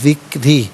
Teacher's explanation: را کے نیچے زیر ہے، را کو باریک کر کے پڑھا جائے گا